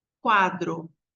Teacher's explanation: se fosse sem u seria cadro o som quadro então aí a gente tem a semivogal com a vogal quase não se fala o u